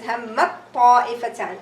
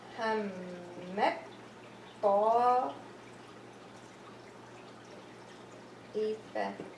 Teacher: you're gonna have the ta is gonna merge into the ta, and the ta sound will disappear.